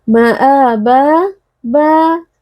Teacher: harakat Maa ba ba Kita waqaf pada fathatain maka berlaku maniwad kita membaca fathatain dengan fathah dipanjangkan satu Alif atau dua harakat